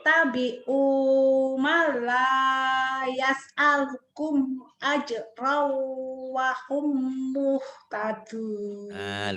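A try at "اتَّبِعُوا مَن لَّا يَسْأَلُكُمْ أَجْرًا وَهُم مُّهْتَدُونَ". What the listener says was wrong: Udah lumayan, udah lancar.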